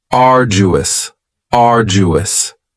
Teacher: you don't hear that D sound that much. It's not very strong. It almost sounds a little like a J.